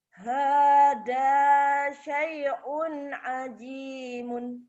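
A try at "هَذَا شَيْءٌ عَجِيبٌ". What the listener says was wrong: Hada syai'un ajibun. Kenapa ajimun? Itu ba.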